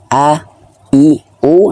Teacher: vokalnya itu dari mulut dan tenggorokan yang terbuka bukan yang hidung yang terbuka